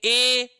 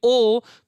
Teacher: फिर ऋ फिर हम कहें ए गोला नहीं बना रहा ओष्ठ। लेकिन जैसे हम कहेंगे ओ तुरंत गोला बना देगा।